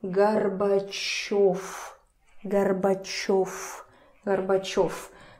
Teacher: So, in the end, it turns to F · So it's not voiced in the end, it's unvoiced.